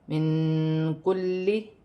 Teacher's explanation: نون ساکن میں اخفا ہوگا کیونکہ کاف حرف اخفا میں سے ہے